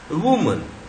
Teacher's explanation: The शॉ represents a mid central vowel in an unstressed syllable. Unstressed syllable में चाहे वो ई हो, चाहे ए हो, चाहे ऊ हो या ई हो, वो अ बन जाता है, क्योंकि हम उसको स्ट्रेस नहीं देते, जोर से नहीं बोलते हैं.